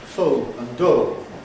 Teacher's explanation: In the north of England in popular speech, these rhyme